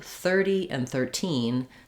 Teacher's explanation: It does have a clear E vowel, 30s, but in 13, you can hear how I have a lot more length on that second syllable. And if I'm saying the two, 30 and 13, then I'm clearly stressing on 13, and I'll use that true T sound.